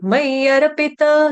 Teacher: पी ह्रस्व है। छोटी ई की मात्रा और आगे जो त है यह पूर्ण है। मयरपित ऐसे नहीं बोलेंगे।